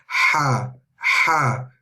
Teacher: comes from the middle of the throat